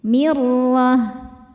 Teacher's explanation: Maka ron-nya tebal. Mirloh ta marbutah jika berhenti jadi ha besar ha sukun ya